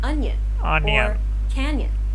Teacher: it kind of sounds like a combination between an n and a y sound